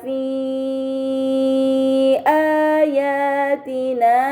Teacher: Kemudian pada kata fi ayatina terdapat mad bertemu dengan huruf hamzah dalam satu kata. Ini dinamakan mad muttasil, maka harus dibaca panjang selama 4 atau 5 harokat.